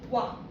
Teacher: 와라는 발음을 할 때 우리가 오를 살짝 발음하고 그 뒤에 아를 제대로 발음하지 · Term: 이중모음